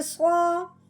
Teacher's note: صاد کو اپنے پر پڑھنا ہے، موٹا پڑھنا ہے، چاہے اس کے اوپر زبر زیر پیش آئے اس کو موٹا ہی پڑھا جائے گا۔